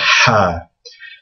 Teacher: it's almost like the sound that you make when you're taking off your glasses and you kind of blow from the back of your mouth to get uh to clean your glasses it's a ha so